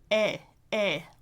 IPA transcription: eɪ